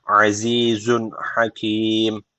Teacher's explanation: En sonunda da meddi arı tecviti var. Bir elif uzatarak duruyoruz.